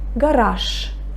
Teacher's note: I pronounce the voiceless sh instead of voiced j.